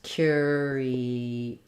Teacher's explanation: First syllable stress, curious, another schwa at the end.